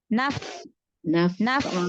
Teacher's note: Jangan dipanjangkan harokat pada na-nya, jangan naf, tapi langsung naf.